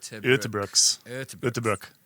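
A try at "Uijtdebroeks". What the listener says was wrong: It's got an S. It's got an S at the end.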